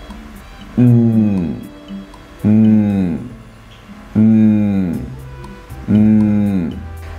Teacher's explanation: The lips are together and the air flows out through the nose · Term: Nasals